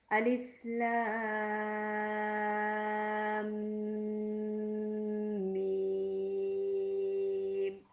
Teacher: अब मीम दो हरफी हरूफ पर मबनी है, मुश्तमिल है, मीम भी 3 हरूफ पर मुश्तमिल है, लेकिन मीम के ऊपर चूंकि शद है, जब भी मीम और नून के ऊपर शद आएगी तो वहाँ पे गुन्ना होगा, नाक में आवाज़ जाएगी, गुनगुनी आवाज़ आएगी। थोड़ी देर नाक में आवाज़ को ठहराएंगे और फिर अदा करेंगे